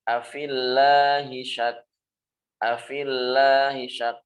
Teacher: Di sini terpisah. Walaupun kasrohnya yang terpisah dengan lafzul jalalah, maka tetap dibaca tipis.